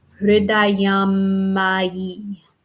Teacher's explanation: going to have a long M in the middle. And it sounds like hridayam mayi.